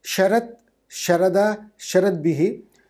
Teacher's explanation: the nominative form sharat, the ta changes to da in the instrumental and form itself, in both in instrumental singular and instrumental plural.